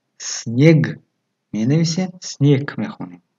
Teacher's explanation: дар охири калима г чун к талаффуз мешавад